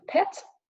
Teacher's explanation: a as in pet and it's like I said front bow it's half open is short and the lips are spread as in every front vowel in English then we've got the short e as in pit it's half